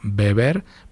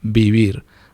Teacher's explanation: La primera es oclusiva, mis labios se tocan, y la segunda es aproximante, mis labios se acercan, pero no se juntan. Pero en español no existe vivir, eso es incorrecto, o sea, no es que sea incorrecto, es extraño porque no tenemos ese sonido.